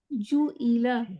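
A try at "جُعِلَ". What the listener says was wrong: نہیں جو ای نہیں, جو عی, جو عی لا, نہیں, ہاں اس کی آواز نا اسی کے ساتھ ہی نکلے گی, ای کر کے الگ سے شارپ آواز نہیں ہوگی. جو عی لا, جو عی لا.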